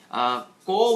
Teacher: এটা সত্যি কেননা যদি তুমি ক উচ্চারণ করো, তখন দেখবে তোমার কণ্ঠ স্পর্শ করেছে তোমার গলার উপরের ঠিক যে তালু, পেছনের দিকের যে তালু, পশ্চাৎ তালু, সেই পশ্চাৎ তালুকে স্পর্শ করেছে।